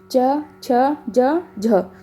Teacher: हमारी जीभ जब भी इन वर्णों को बोलते हैं तो हमारी जीभ हमारे तालु से टकराती है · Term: तालव्य